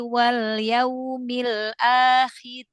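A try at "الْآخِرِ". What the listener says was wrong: Ya, jangan diangkat pangkal lidahnya ya.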